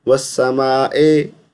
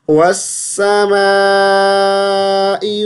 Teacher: हम इस हमज़ा को मजहूल पढ़ते हैं, मजहूल नहीं पढ़ना। वस्समाए, ए की आवाज़ नहीं आनी चाहिए, ई की आवाज़ है।